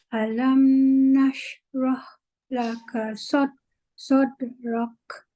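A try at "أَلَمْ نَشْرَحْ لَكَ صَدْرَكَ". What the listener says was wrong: Okey, lepaskan shin lama sikit daripada lam tadi. Alam nashrah laka. Saya nak dengar sifat tu. Bunyi sifat tu saya nak dengar.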